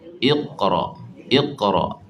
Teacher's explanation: Bila matikan dia, nak buat qalqalah tu tetap kena angkat pangkal lidah tu naik. Iqra. Jadi dia tak boleh nak jadi nipis lah kat situ.